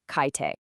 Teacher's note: So, to make it smoother, this sound change called iambin kicks in. The K sound just vanishes, and it becomes the so much easier to say kaite. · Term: euphonic change